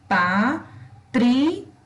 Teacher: Esse I e A, eles formam uma sílaba só, senão seria Patricia.